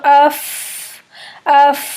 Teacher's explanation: फ अदा करते हैं। आप ऊपर के दो दांतों को नीचे वाले होंठ के गीले वाले हिस्से यानी तर वाले हिस्से पर रखकर अदा करते हैं। और इसमें एक हम्स होता है। · اوپر کے 2 دانتوں کو نیچے والے ہونٹ کے گیلے والے حصے یعنی تر والے حصے پر رکھ کر ادا کرتے ہیں، اور اس میں ایک ہمس ہوتا ہے۔ جب ہم اس کو پڑھتے ہیں تو اف، اف، ہمس کی باقاعدہ ایئر منہ سے سانس کی آواز آتی ہے، اور پھر اس کے بعد فا کی آواز نکلتی ہے، اف، اس طرح سے۔